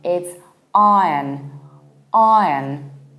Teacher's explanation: So in iron, there is no R, no proper O, and no E from din.